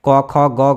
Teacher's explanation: क ख ग घ जो भी क वर्ग है सबका उच्चारण स्थान कंठ ही होता है।